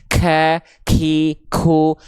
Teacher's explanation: Tapi untuk huruf kaf dia pengkhususan nafas yang keluar bukan mengalir tapi hanya berupa percikan-percikan nafas saja. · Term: hams